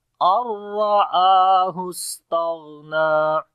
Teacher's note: اور را کو موٹا پڑھیں گے، را کے اوپر زبر ہے، آ کو لمبا کریں گے، اس کے اوپر کھڑی زبر ہے. سین کے اندر جو ہے صفت حمز ہوگی، صفت صفیر بھی ہے، سیٹی کی بھی آواز آئے گی. · نون کو ختم کریں گے اور ڈائریکٹ حمزہ کو را کے ساتھ ملائیں گے. اور را کو موٹا پڑھیں گے، را کے اوپر زبر ہے، آ کو لمبا کریں گے، اس کے اوپر کھڑی زبر ہے.